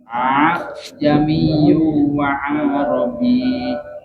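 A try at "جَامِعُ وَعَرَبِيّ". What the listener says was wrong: Tapi jangan lurus ya. Ada A-nya dulu nih, hamzah yang pertama. Baru tuh hamzah yang kedua baru agak ringan. Jangan ngalir. Jangan ngalir begini.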